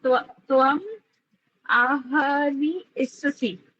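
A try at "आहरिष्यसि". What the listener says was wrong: इत्ससी ई नाही ईचा उच्चार करायचाच नाही. आता आपण त्याची संधी केली ना. आहरीस आहरी सती ससी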